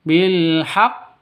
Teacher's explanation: Karena tas ada tasydid di sini. Nah, kalau ada tasdid artinya qof-nya ini ada dua cuman digabung jadi satu. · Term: qalqalah kubra